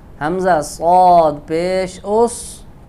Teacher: اس یہ سین کے مشابہ ہو گیا، یہ غلط ہے. اس میں سیٹی تو ہوگی، صفیر ہے، لیکن صاد کو پر ادا کریں گے